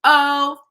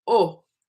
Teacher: Oh, that's the English O. The Spanish O is a deeper, darker sound formed at the front of the mouth.